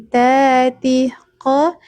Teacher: Huruf-huruf tebal itu, Teman-teman, tidak boleh dimonyongkan, tetapi pangkal lidahnya terangkat. Kalau huruf qo ini pangkal lidahnya menyentuh langit-langit bagian tulang.